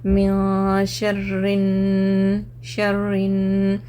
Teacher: इख्फा का क्या मतलब, आवाज़ को नाक में छुपाएंगे, तो नून की आवाज़ ज़ाहिर मिन नहीं पढ़ रहा हूँ, म्याँ म्याँ, ज़बान बीच में ठहरे रहती, नाक में से आवाज़ निकलती रहे